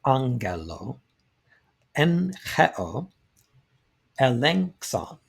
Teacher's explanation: When a gamma is followed by another velar, the first gamma is pronounced like an N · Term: gamma nasal